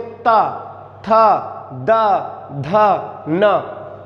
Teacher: जब हम इनको बोलते हैं तो जो जीभ होती है वो दांतों को छूती है, इसीलिए इनको दंत व्यंजन कहा जाता है।